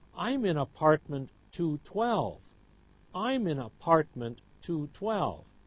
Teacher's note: having stress on apartment and 12. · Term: sentence stress